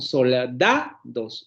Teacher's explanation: Sílaba tónica, la sílaba del medio, da, y las sílabas átonas, las que aparecen a los lados y que no tienen un acento tónico o prosódico, ¿vale?